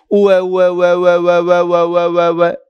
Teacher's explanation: अगर आप इसको कंटीन्यूअस बोलेंगे उ और अ को तो जितनी देर बोलेंगे और तेजी से बोलेंगे तो आपको उ न सुनाई देकर फिर आपको सामने वाले को व सुनाई देगा। उ व् व अर्थात वह सुनाई देगा क्योंकि मैंने उन दोनों के बीच में से हवा भी स्पर्श नहीं होने दी। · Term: संहिता संज्ञा